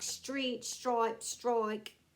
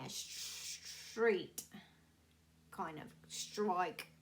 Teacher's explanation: STR, like street, stripe, strike, little H in there, street, kind of, strike, just a little one.